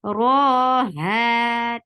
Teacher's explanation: Ra will be heavy and 2 counts long.